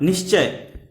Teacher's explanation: विसर्ग के बाद च आ रहा है, इसलिए यहाँ विसर्ग परिवर्तित होकर के तालव्य सा का रूप धारण कर लेगा और यहाँ पर भी होगा निश्चय।